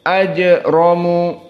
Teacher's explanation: maka jim huna sukun, maka dia hukumnya qalqalah as-sughra. Ajramu, dan ra dalam keadaan mufakhamah.